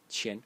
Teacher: pronounced as qian in the first tone